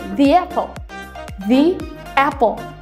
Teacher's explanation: So, there is a sound y between the and apple. Ada suara y di antara the and apple. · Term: intrusion